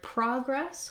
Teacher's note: in the word progress, we have first syllable stress, and you can see there'll be a little line in the dictionary before that stressed syllable.